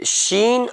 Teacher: شین، بیچ زبان اوپر تالو میں لگائیے